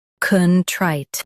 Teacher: Both US and UK have the same pronunciation of this word. Stress trite. Keep con soft and clear.